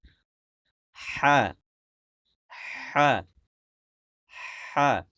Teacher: হলকের মধ্যকার মানে গলার মাঝখান থেকে উচ্চারণ করেন